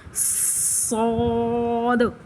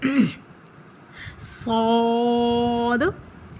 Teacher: اس کو بھی سیٹی کی آواز نکالیے گا. صاد, اس کو پر بھی کرنا ہے, اس میں قلقلہ بھی کرنا ہے, یعنی لاسٹ میں جو دال آتا ہے نا اس پہ ہمیں جنبش کرنی ہے